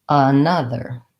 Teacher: In the symbols, what we'll see is that we add that the stress is in almost the same place, except that we have an N in our syllable. So now the stressed syllable is na, and we have, here's our unstressed schwa before the other.